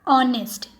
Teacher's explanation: the initial consonant H is not pronounced here